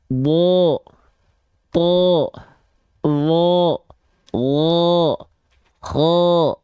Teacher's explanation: ketika fathah bunyi vokalnya adalah bunyi vokal o maka itu termasuk ke dalam huruf yang tebal